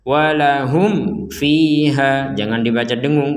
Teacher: Contoh kedua, mutasyabihau walahum fiha. Di sini mim sukun bertemu fa, kita harus menjelaskannya. Walahum fiha, jangan dibaca dengung.